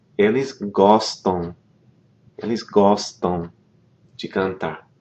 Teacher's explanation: Those verb forms that end in M, like we have here, gostam. You don't pronounce the M. What that does is it nasalizes the preceding vowel.